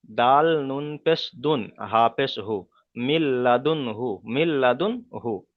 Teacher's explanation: তাই নুন সাকিনকে লামের সাথে মিলিয়ে বিনা গণ্যায় পড়তে হবে, একে ঈদগামে তাম বলা হয়।